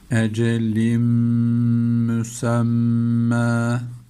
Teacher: Bir de ötreli olduğu için dudağımız ileride olacak